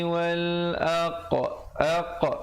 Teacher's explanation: pantulkan huruf qaf itu yang bertanda mati dengan membulatkan mulut